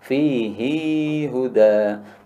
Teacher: Kalau bacaan kan Ibnu Katsir itu membacanya ha ini panjang, fihi huda. Berarti di sini ada ya-nya sebenarnya.